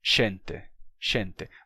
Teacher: ser xente tem que ter vindo de um som de G então gente se tornou xente perdeu a sonoridade